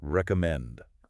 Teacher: Listen again to how my voice rises at the end.